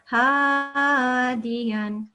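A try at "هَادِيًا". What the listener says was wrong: Don't make your mouth round for this one. Ha, mouth open.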